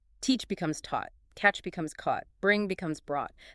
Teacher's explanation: They all share that deep awt sound.